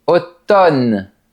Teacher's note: On ne prononce pas la lettre M.